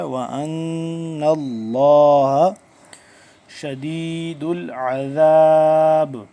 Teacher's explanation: غنہ کریں گے، نون مشدد ہے